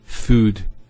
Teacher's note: there's the elongation of the O sound food not food now if I transliterate this into Arabic I